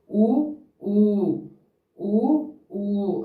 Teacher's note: ఊ ఊ ఇవి పెదాల ఆధారంగా చేసుకొని పుడతాయి. ఊ ఊ ఊ ఊ అని పెదాలను ఆధారంగా చేసుకొని నేర్పించాలి.